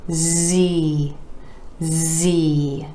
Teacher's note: Again, our E vowel sound coming after the consonant Z, made just like the consonant sound S, except you're adding your voice. This is a voiced sound.